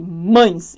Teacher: o A tá muito mais forte, tanto que o E é tão fraco que ele pode ser pronunciado como I. Eu fui da vogal para semivogal, é então um ditongo decrescente.